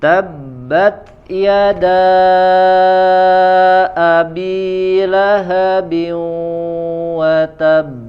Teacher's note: Lahabin wa digunnahkan ya, ada tambahan gunnah, tidak langsung